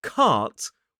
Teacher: And in the word cart /kɑːt/, we have the long /ɑː/ vowel sound. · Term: long a vowel sound